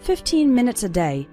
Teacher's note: the last two syllables of minutes become very small and just serve to connect with the word day